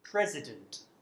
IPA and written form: ˈprezədənt (president)